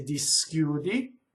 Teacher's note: Notice where I put the S. When I speak, I could say di schiudi. The S hisses on the first syllable.